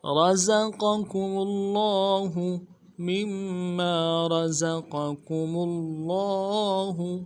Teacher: قوف کو موٹا کریں گے، کاف کو باریک